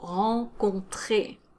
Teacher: the tre is longer than the other syllables because that's where the stress is